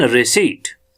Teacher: स पे हमारी स्ट्रेस पड़ती है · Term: प्राइमरी एक्सेंट